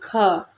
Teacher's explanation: स्पर्श व्यंजन कंठ ध्वनि अघोष और महाप्राण होते हैं।